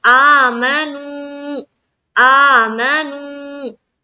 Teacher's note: नू को उतना ही खींचना है जितना आ को खींचेंगे , क्योंकि खड़ा जबर खड़ी जेर और उल्टा पेश भी मद्दा